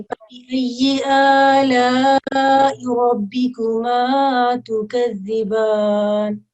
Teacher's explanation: را جو ہے وہ موٹا پڑا جائے گا